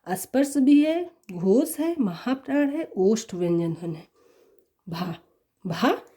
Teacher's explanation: स्पर्श भी है, घोष है, महाप्राण है, ओष्ठ व्यंजन ध्वनि है। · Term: स्पर्श घोष महाप्राण ओष्ठ